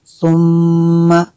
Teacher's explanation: میم شدد ہے، یہاں پہ غنہ کرنا ہے